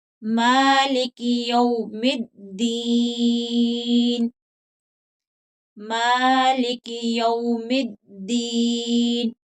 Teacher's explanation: میم کے اوپر کھڑی زبر ہے، ایک الف کی مقدار کے برابر لمبا کر کے پڑھیں گے